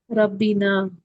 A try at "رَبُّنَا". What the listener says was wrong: ربی کیسے ہو گیا بھائی؟ ربی، دیکھیں ربی نا کتنا عجیب لگ رہا ہے، کبھی سنا بھی ربنا، کبھی سنا بھی نہیں ہوگا آپ نے ربی نا.